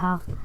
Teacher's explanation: जिस व्यंजन ध्वनि के उच्चारण में मुख गुहा खुली रहती है और वायु बंद कंठ को झटके से खोलकर बाहर निकलती है उसे काकल्य वर्ण कहते हैं, जैसे हा।